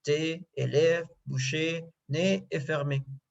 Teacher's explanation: On le forme avec la bouche fermée, les livres tirés, la langue en avant, la pointe de la langue touche les dents devant